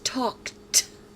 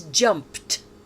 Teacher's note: The final sound in each of these verbs is unvoiced, and the ed is pronounced t.